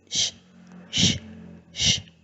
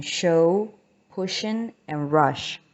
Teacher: We continue with the palatal fricatives, and the voiceless one is sh